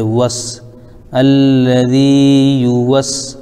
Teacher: واو پر زبر لیکن سین ساکن ہے تو واو کو سین میں ملا دیں گے